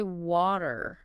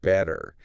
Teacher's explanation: sharp t And more like a really quick soft D